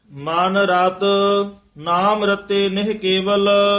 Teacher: ਮਨ ਰਤ ਇਹ ਪੋਲਾ ਰਤ ਬੋਲਣਾ ਨਾਮ ਰਤੇ ਨਿਹ ਕੇਵਲ ਅਗਲਾ ਰਤੇ ਪਦ ਕਸ ਕੇ ਬੋਲਣਾ